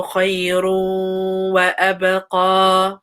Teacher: there's a tanween dhamma, and after is a wow. So make sure you make that complete merge and make sure your mouth gets ready for the letter wow.